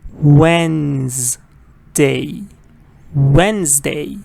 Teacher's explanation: of people mispronounce with three syllables changes to three syllables no it's two syllables Wednesday Wednesday and again stress is on the first part